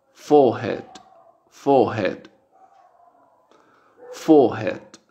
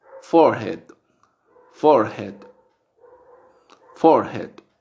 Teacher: del inglés británico no se pronuncia la r que viene después de una vocal entonces la vocal se hace larga